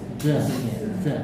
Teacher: Nah, sedangkan za itu ujung lidah kita Za. ini, ujung lidah kita bertemu dengan belakang gigi seri bawah. ada bocornya. za, za.